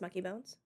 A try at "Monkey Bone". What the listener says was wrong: You're still saying Monkey Bones.